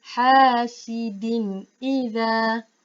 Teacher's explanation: Kita tidak boleh dengung. Kita baca dengan jelas. Kita baca din tu dengan jelas.